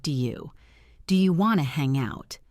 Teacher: Notice how do and you often blend together to sound like, "Do you do you want to hang out?" Try saying it casually.